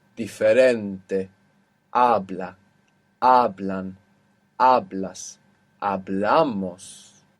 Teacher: the natural accent will be on the penultimate syllable, the second last syllable